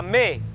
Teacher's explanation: no Michelense, quando apanhamos um destes ditongos, a gente junta as duas vogais e transforma aquilo num único som.